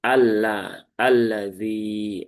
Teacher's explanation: terjadi idgham dari lam ta'rif ke lam yang berharokat menjadi Allah, alladzi. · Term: idgham syamsi